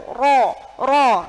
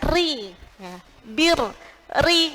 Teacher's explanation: Secara isti'la, tarqiq adalah mengucapkan huruf dengan cara yang ringan, ya. Jadi tidak boleh tebal, sifatnya tipis, jadi pengucapannya ringan, sehingga ketika mengeluarkan suara tidak sampai memenuhi mulut.